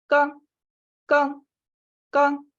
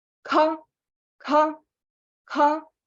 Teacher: Если первая без придыхания вообще «к», то вторая с придыханием. Ха, ха. Не слишком утрированно, да, но это придыхание, оно там есть.